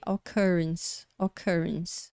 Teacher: Esse som representado pela letra V de ponta cabeça é próximo ao som do nosso A do português.